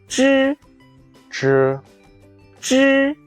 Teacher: The front of your tongue initially touches the hard palate.